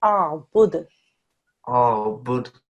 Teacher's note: When we pause on this dal, which we will do because it happens to be at the end of a verse, the dhamma physically will stay in the grammar Majid, obviously, but how you read it will be as a dal sakin. When it's a dal sakin, it's a kalkala letter. So we do a little bit of a bounce.